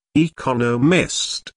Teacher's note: four syllables in Economist with the stress on the second syllable